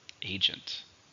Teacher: 2 syllables, stresses on the first syllable.